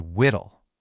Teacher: It's just a softer, gentler way of saying the word little. By swapping that harder L sound for a W, the word suddenly sounds way more melodic and soothing. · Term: baby talk